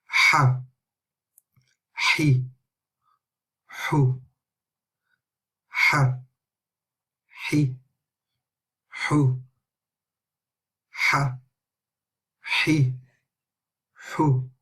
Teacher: So ha, we need to make sure that we're pronouncing this letter properly from the middle of our throat. We're pronouncing it with the full breath coming out and the air coming all the way from the throat out of the mouth.